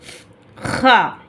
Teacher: இது வந்து நம்ம நல்ல மேல், அதாவது தொண்டையுடைய மேற்பகுதியிலிருந்து ஹா அப்படின்னு சொல்லி நம்ம சொல்கிறோம்